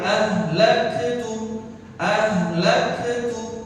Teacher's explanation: Nah, untuk kafnya, kaf sukun di sini jangan dibaca qalqalah, jangan dibaca mantul, jangan ahlaktu.